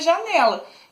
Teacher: Janela também tem a sílaba forte, é o né. Então, ela é paroxítona